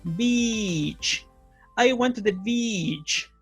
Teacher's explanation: Ese es el sonido de E que ustedes tienen que hacer para pronunciar beach, ¿ok? Tienen que tensar la cara y hacer una I un poquito más larga